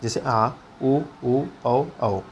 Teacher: अगर हम इसका उच्चारण करते हैं तो हमारा मुंह जो है वृत्त गोला का आकार हो जाता है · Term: वृत्ताकार स्वर